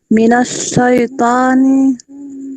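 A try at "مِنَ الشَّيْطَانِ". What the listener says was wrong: Syaitoni. Minasyaitoni. Minasyaitoni. Tidak boleh miring ya.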